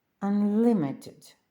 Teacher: а якщо воно багатоскладове то префікс Ан не наголошується